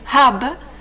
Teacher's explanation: empieza, dice, en el fondo de la garganta para hacer el ha. Si hacéis eso y os ponéis la mano en la garganta, es de ahí de donde nace el primer sonido, y termina en B, es decir, cuando roza, muere al alcanzar hab, el extremo de los labios.